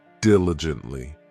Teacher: This adverb has 4 syllables, and the stress is on that first syllable